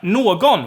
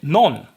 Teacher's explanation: g gets dropped and also the following vowel